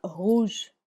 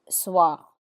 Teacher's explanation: the difference between the strong R like rouge and a slightly weak or dry R in soir